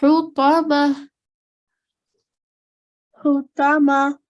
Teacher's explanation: The sound is more so coming towards the middle of your throat.